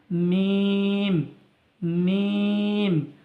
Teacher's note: দুই ঠোঁটের শুকনো অংশ মিলিত হয়ে উচ্চারিত হয়